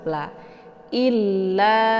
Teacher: ada tasydid di huruf lam jadi cara bacanya i-nya ditekan sedikit untuk masuk ke dalam huruf La